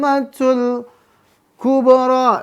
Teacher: habis to panjang 6 harokat lalu masuk ke mim bertasydid